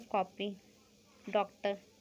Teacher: इनका उच्चारण आ तथा ओ की बीच की ध्वनि अ के रूप में होता है। इसका प्रयोग अंग्रेजी से हिंदी में लाए गए शब्दों में किया जाता है, जैसे कॉपी, डॉक्टर। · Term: आगत